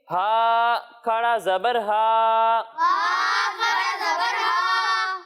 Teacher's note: खड़ी हरकत को हम 1 अलिफ के बराबर खींच कर पढ़ेंगे। यानी खड़ी हरकत को भी 1 अलिफ के बराबर खींचेंगे और हुरूफ मद्दा को भी 1 अलिफ के बराबर खींचेंगे।